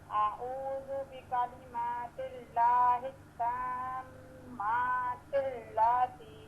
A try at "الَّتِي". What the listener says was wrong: لا کو لمبا نہیں کرنا لاتی